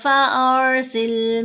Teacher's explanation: را کو پر پڑھنا ہے، لیکن نہ را کو ہلانا ہے نہ لام کو